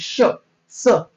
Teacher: काय म्हणतात उष्मेय म्हणतात त्याला घर्षक वर्ण म्हणतात हवेचे घर्षण होते आता श उच्चारताना हवेचे घर्षण झाले